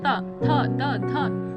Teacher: दांत के जो निचला दांत पे नहीं, ऊपरी वाले दांत पे टच करेगा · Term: दंत व्यंजन